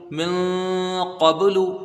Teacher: جائے گا، اخفا ہوگا، اور قاف کو با میں ملائیں گے، جب اس کو قاف کو با سے ملا جائے گا تو قلقلہ ہوگا · نون ساکن کی آواز کو ناک میں چھپا کر ایک الف کی غنہ کے ساتھ پڑھا جائے گا